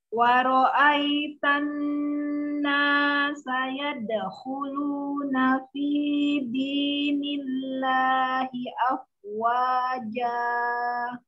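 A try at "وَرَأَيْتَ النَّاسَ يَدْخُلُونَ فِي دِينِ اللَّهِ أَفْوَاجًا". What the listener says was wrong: Wanya tipis, lunya dalnya mengalir saja. Ya dakhulu, jangan berhenti, jangan dijeda. Ya dakhulu nafi dinillahi afwaja.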